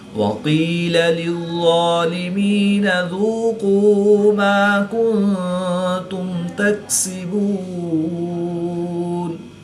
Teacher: نون ساکن کے بعد تا حروف اخفا میں سے ہے تو یہاں پر اخفا ہوگا، یعنی غنہ زمانی کر کے پڑھیں گے۔ میم ساکن کے بعد حرف با اور میم کے علاوہ حرف تا ہے تو یہاں پر اظہار شفوی ہوگا، غنہ نہیں کریں گے۔ وقف کی حالت میں نون کی زبر کو ساکن کریں گے تو یہاں پر وقف کی حالت میں مد عارض ہوگی، 2 سے 3 الف تک کھینچ کر پڑھیں گے۔ · قاف اور ظا حروف مستعلیہ میں سے ہیں جو ان کو پر یعنی موٹا پڑھیں گے۔